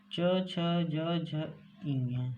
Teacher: च, छ, ज, झ, इं, ये तालव्य से बोले जाते हैं